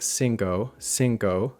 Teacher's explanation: we inadvertently apply the same gliding vowel that we use in English in so or no. So we end up saying cinco, cinco, instead of cinco, cinco.